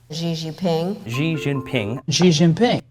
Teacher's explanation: Americans' fondness for giving loan words final stress and the consonant je, regardless of the original language